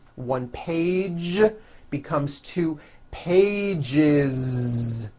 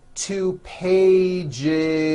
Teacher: word page for example which ends in an a voiced sound one page becomes two pages with that voiced Z